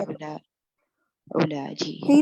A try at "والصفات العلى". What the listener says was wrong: نہیں تو وہاں پر پیش ہوگا.